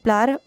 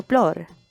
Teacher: plar or father rounds into plor